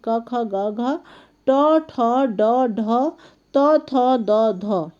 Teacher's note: जिन व्यंजनों के उच्चारण करते समय मुख के द्वार बंद हो जाते हैं तथा इस प्रकार बोले जाते हैं कि हवा उच्चारण स्थान को स्पर्श मात्र करती है, वे स्पर्श व्यंजन कहलाते हैं।